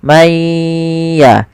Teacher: Contoh ada nun mati man ketemu ya, maka mayya sambil ditahan suara gunahnya.